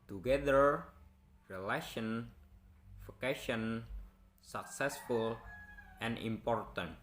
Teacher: Word consisting of three syllables that are stressed on second syllables.